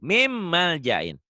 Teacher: Dibacanya, ini N ketemu M. Karena hukum N, hukum nun mati, min. N-nya berubah jadi M tuh. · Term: idgham